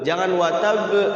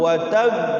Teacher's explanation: Hurufnya itu ada dua, qafnya itu dimasukin ke tasydid. Jadi cara baca qalqalah bertasydid itu dia harus ditahan dulu.